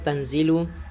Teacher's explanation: ayat kedua, pada lafaz tanzilu terdapat hukum bacaan ikhfa hakiki, yaitu apabila nun sukun bertemu dengan huruf zai maka cara membacanya samar-samar tanpa mendengung